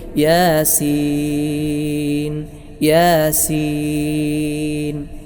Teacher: യാ എന്നതിനെ ഒരലിഫിന്റെ ഖദർ മാത്രമേ നീട്ടേണ്ടതുള്ളൂ സീൻ എന്നതിനെ മൂന്ന് അലിഫിന്റെ ഖദർ നീട്ടി ഓതുന്നതാണ് ഉത്തമം